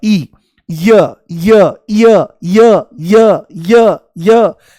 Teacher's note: जैसे ही य बोलोगे तो ई शुरू में महसूस होगा, ई, य य य य य य य, जैसे सीढ़ी अटक गई हो तो ई की ध्वनि आती है। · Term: अर्धस्वर